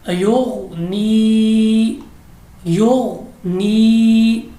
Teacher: غین مستعلیہ ہے تو ہم اس کو پر پڑھیں گے